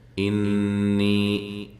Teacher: نون مشدد پہ غنہ ضروری ہے اور یا مدہ ہے